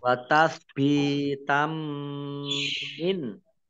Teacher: fathah tanwin bertemu dengan huruf mim bacaan idgham bi gunnah, idgham masuk bi dengan gunnah mendengung. Kemudian ini ditandai dengan mim tasdid.